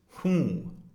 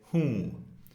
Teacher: Again, this is nasalized. The N isn't actually pronounced, even though you may see it written hoon.